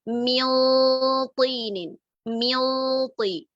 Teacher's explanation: ہم مخرج کے قریب بھی جا رہے ہیں، نون کو چھپا بھی رہے ہیں اور ساتھ میں ہیوی غنہ کر رہے ہیں